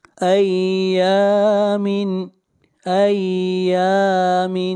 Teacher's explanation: یا کو کھینچ کر پڑھیں گے ایک الف کے برابر، یہاں پر الف مدہ ہے